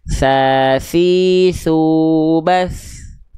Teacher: Kalau huruf sa dilafalkan begini, ujung lidah disentuhkan ke langit, ke ujung gigi seri atas